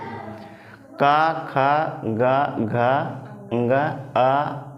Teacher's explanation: कंठ को बोलो। कंठ की सहायता से बोला जाएगा।